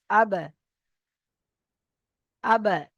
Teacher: উচ্চারণ স্থানে ধাক্কা লাগছে আবার আলাদা হয়ে যাবে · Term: কলকলা